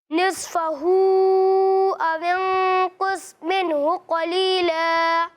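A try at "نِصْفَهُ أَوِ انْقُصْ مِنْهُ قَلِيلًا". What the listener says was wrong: آپ نے یہاں پر تو قاف کو پر پڑھا ہے, لیکن یہاں آپ نے قاف کو پر نہیں پڑھا, ٹھیک ہے. تو یہاں پر بھی قاف ہے, اسے بھی پر پڑھنا ہے, ٹھیک ہے.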